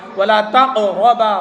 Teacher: قاف حروف قلقلہ میں سے ہے اس لیے قلقلہ ہو رہا ہے